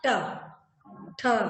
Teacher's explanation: ट वर्ग के जो अक्षर हैं ये हमारी मूर्धा को स्पर्श करते हुए बाहर निकलते हैं